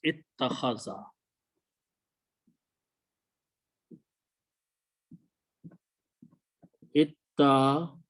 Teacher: the makharij of alif and ta are very close to each other. So we pronounce this alif as a ta. So it becomes two tas.